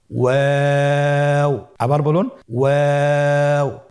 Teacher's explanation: 2 ঠোঁট গোল করে মাঝখানে ফাঁক রেখে হরফটি উচ্চারণ করতে হবে।